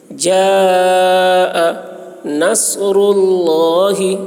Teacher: صاد کو موٹی آواز میں پڑھیں گے. نصر اللہ، را کو موٹی آواز میں، را پر ہوگی.